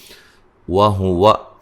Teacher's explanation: واو کو ادا کرتے ہوئے دونوں ہونٹوں کو گول کرنا ہے